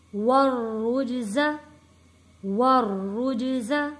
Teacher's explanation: یہاں پہ را کے اوپر تشدید ہے اور را کے اوپر پیش بھی ہے، یہاں پہ را کو موٹا پڑھیں گے۔